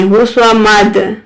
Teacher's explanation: دال حروف قلقلہ ہے، اس کو جھٹکا دے کر پڑھیں گے۔